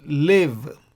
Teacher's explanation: Now this schwa, the second one, occurs after a short vowel, which is chirik here. So we say live. So the schwa is silent.